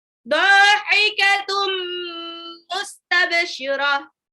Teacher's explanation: idgham bigunah, dilebur tapi ditahan 2 sampai 3 harokat